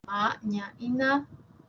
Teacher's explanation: Ma, ña y na, que tienen siempre la úvula despegada de la pared faríngea. Una es bilabial, como es esta imagen, la otra es palatal y la última nasal, alveolar. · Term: nasales